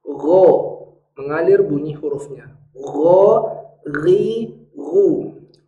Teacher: Huruf ghain adalah huruf yang selalu dalam kondisi tebal, kecuali dalam kondisi berharokat kasroh.